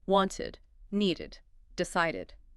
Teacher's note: That little id sound gives you clarity. It separates the root word from the past tense marker so the listener can hear both parts.